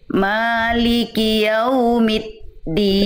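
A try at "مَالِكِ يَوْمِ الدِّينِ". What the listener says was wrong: Nah, itu masih MIT kedengarannya, kalau kita latinkan tuh kayak MIT, harusnya MIDal. Middin. Maliki Yaumiddin. Coba Bunda, mid.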